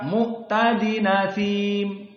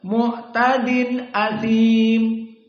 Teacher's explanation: Jadi nunnya tidak dalam keadaan din, tapi dalam keadaan fathah menjadi dina. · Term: an-naql